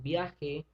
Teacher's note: pronuncio las dos vocales al mismo tiempo por lo tanto forma un diptongo